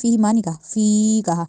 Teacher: زبان کہا۔ فیہما، اب پھر وہی فیہما آ گیا ہے کہ فا کے بعد جے مد آئی ہے، ہم نے اس لیے اس فا کو لمبا کیا ، فیہما نہیں کہا، فی کہا، اور ہا کو لمبا نہیں